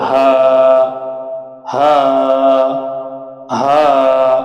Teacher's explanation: খেয়াল করতে হবে এই হায় কোনো বাতাস বের হবে না, গলাও চাপানো যাবে না। হা গলা খোলা রেখে একালিপ টেনে পড়তে হবে